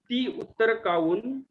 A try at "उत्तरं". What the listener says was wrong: उत्तरम अनुस्वार थोड़ा देखिए ध्यान से।